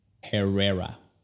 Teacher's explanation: La H no se pronuncia en español, pero en inglés sí. En inglés es como exhalar. Es como cuando te aseguras de que tu boca huele bien.